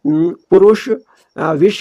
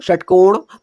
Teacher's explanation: हमारी जो जीभ की नोक है ऊपर जो मूर्धा हो रही है उसको छू रही है, उसके पास तक का जा रही है, मूर्धा के पास तक का जा रही है, उसको टच कर रही है, छू रही है। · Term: मूर्धन्य